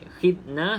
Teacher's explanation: Za jangan dilantunkan sebab bukan daripada Qalqalah